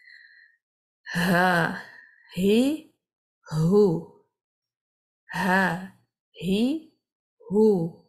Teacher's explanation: There is some friction or rubbing of the vocal cords as the air travels through the small opening. Unlike the letter hamza, the letter ha doesn't have the closing of the vocal cords. So it remains open, and you leave a little tiny gap between the two folds, like here and here, there's a tiny gap, as you can see.